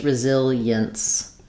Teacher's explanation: And then when we're talking about resilience, again, we can have e-ence, resilience, or just resilience. Americans will tend to make these more like 3 syllables rather than 4.